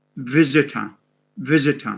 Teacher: It's a schwa. I mean, although it has an O, but it's a schwa.